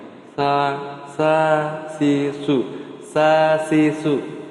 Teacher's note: ujung lidahnya itu harus menyentuh gigi bawah belakang ya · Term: sin